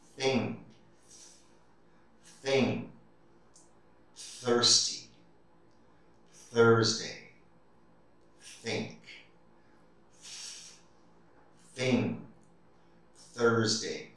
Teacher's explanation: there is no vibration here it's just your breath your air that's making that th sound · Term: voiceless